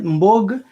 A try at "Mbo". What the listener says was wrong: the G is silent. Mbo. I think Mbo. The G is silent.